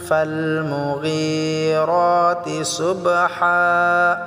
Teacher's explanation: ফালমুগী, গীটা আমরা এক আলিফ টেনে পড়বো, র এক আলিফ টেনে পড়বো।